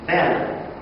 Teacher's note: And we pronounce the strongest syllable within the word fully, be. But the second syllable is going to be reduced. The vowel in the second syllable.